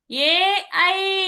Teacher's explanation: కంఠం నుంచి తాళాల నుంచి రెండు స్థానాలు కలిపి వస్తుంది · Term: కంఠతాలభ్యః